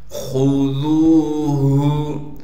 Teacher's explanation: خا کو موٹا کر کے پڑھیں گے بغیر کھینچے